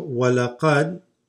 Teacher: Okay, so وَلَقَدْ. Now this dal, d, this is going to drop. It's going to go straight into the sad.